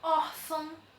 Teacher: o or recebe acentuação e ela é a sílaba mais forte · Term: paroxítona acentuada